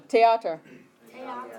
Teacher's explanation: In German, it's pronounced Theater. They don't have the TH sound, so it's a hard T.